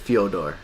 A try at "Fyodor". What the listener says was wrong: Not with a Not with a U. It's Fyodor.